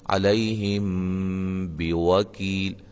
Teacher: اچھا ہم نے پڑھا تھا شروع میں کہ میم ساکن کے بعد با آ جائے تو وہاں اخفا مع الغنہ ہوگا